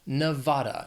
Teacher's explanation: It has 3 syllables, stress is on that 2nd syllable.